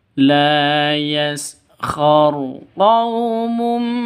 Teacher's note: tanwin bertemu dengan mim jadi cara bacanya itu masuk ke mim yang kedua disertai dengung dua ketukan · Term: idgham bighhunah